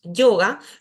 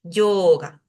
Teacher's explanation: Por eso, cuando nosotros decimos yoga, no decimos yoga, sino que deberíamos decir yoga. Esa O debería durar un poquito más.